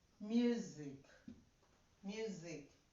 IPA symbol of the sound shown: u: